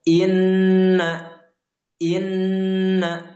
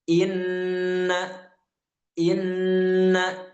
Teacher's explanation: ghunah artinya adalah dengung. Yaitu kita tahan dulu ya, kita tahan dulu sepanjang dua harakat.